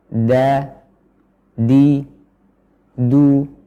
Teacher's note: ujung lidah bersama dengan pangkal gigi seri atas nah tanggal gigi seri atas ini bukan berarti gusi atau langit-langit